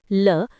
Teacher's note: जिसके उच्चारण में हवा जीभ के पार्श्व बगल से निकल जाए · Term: पार्श्विक